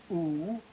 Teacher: Higher and backer with more rounding.